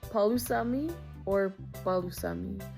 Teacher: this one is a softer P sound, making almost a B sound